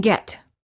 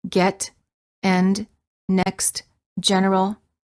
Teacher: the lips are farther apart than for the A and the lips are relaxed the tongue is also relaxed and in the mid High position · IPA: /ɛ/